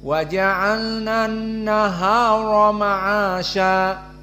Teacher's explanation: semuanya dalam keadaan murqqoh sehingga dibaca dengan flat tidak ada ketebalan tidak ada alistilla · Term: muraqqaqah